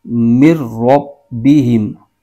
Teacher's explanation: ادغام کا قاعدہ بھی ہے اور میم مشدد بھی ہے، اور یہاں پر غنہ ہوگا ہدم من ربہم، مر تو یہاں پر نون نہیں پڑھیں گے، میم کو آگے را کے ساتھ ملائیں گے